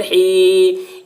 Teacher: بسم اللہ الرحمن الرحیم، ہا یا زیر ہی، یا ساکن سے پہلے زیر ہے، یا مدہ ہوا، اس لیے یا مدہ کو ایک الف کے برابر کھینچ کر پڑھیں گے